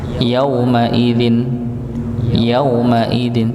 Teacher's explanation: wau sukun tadi tapi tidak bertemu dengan pasangannya harusnya pasangannya adalah dhammah tapi ini adalah fathah maka tidak dipanjangkan yaumaidzin yaumaidzin cukup Yain tidak perlu dengan hentakan.